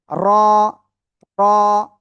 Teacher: জিহ্বার আগার পিঠ তার বরাবর উপরে তালুর সাথে লাগিয়ে র অক্ষরটি উচ্চারণ হবে মোটা আওয়াজে